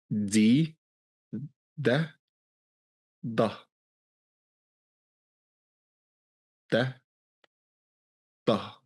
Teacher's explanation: you roll the tongue a little bit up and stick it against the upper row of teeth. So it's still the tip of the tongue, but it's yeah, it's kind of the back underside of the tip.